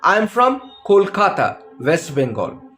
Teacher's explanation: So I'm putting a stress on Kolkata. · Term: new information stress